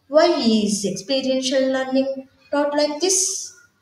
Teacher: the speaker can use a falling pitch at the end of the question on the word this to express a genuine question